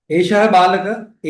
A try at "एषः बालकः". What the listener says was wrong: विसर्ग I'm not hearing.